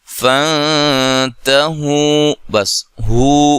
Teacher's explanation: تو واو مدہ یہ آپ دیکھ رہے ہیں، یہ واو مدہ ہے، اور یہاں اگر ہم وقف کرتے ہیں تو واو مدہ کی جو مقدار ہے وہ بھی ایک الف ہوتی ہے۔ حروف مدہ جو کہ 3 ہیں، الف مدہ، واو مدہ اور یا مدہ، تینوں کی مقدار ایک ایک الف ہوتی ہے، ٹھیک ہے جی۔